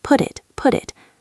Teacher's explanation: The T in put connects to the I in it.